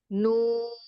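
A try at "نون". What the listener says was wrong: पहले से बहुत जल्दी नाक में जा रही है। नून।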